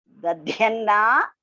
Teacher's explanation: First da is Alpa Prana, the second one is Mahaprana.